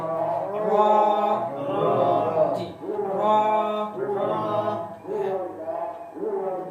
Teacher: এগুলো উল্টাবেন >> র >> র জিহ্বার আগার উলটা উপরে লাগাবেন যখন র উচ্চারণ হচ্ছে